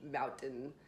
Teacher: I just didn't say the T.